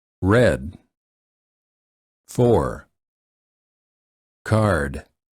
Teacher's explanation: are two different ways to produce this sound one method is the tip of the tongue curls a bit and then is slightly pulled back